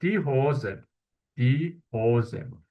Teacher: Burada s görürük samitini. Sait var. Ona görə s, z səsi kimi oxunacaq.